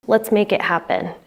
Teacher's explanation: The words let's make and happen are all slightly stressed. The word it is unstressed and the word happen kind of receives a little bit more stress than the others indicating that it's kind of the primary stress.